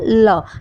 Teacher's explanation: टिप है अगला भाग है वह मसूड़ों को स्पर्श करता है और हमारी जो हवा है प्राणवायु है वह साइड से दोनों साइड से बाहर निकल जाती है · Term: पाशविक, पार्श्विक व्यंजन